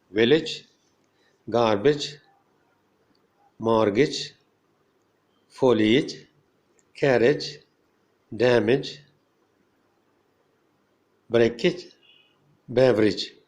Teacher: When a word ends in AGE, there is an I sound, for example, in village, garbage, mortgage, foliage, carriage, damage, breakage, beverage.